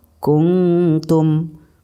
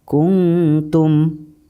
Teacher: Jadi nun matinya masih agak sedikit jelas tapi didengungkan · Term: ikhfa aqrab